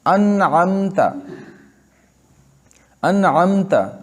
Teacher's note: اظہار کے ساتھ پڑھیں گے، یعنی میم کو مکمل طور پہ ادا کریں گے اپنے مخرج سے، اس کے بعد ہم دوسرا حرف پڑھیں گے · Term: اظہار شفوی